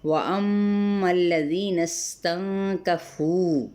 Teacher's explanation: نون کی زبر کو سین کے ساتھ ملائیں گے، سین پہ سیٹی لیکن ہلانا نہیں ہے